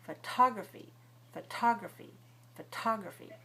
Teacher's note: photography is stressed on the second syllable. So we stress with a large puff of air.